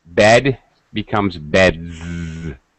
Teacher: for example, bed becomes beds, right, with a Z sound.